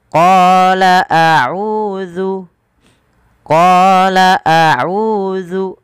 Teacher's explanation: Qala mad tabi'i 2 harakat, panjangkan qanya.